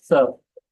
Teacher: त और स का मखरज जुबान के नोक और सनाया अलिया के किनारे से अदा होता है।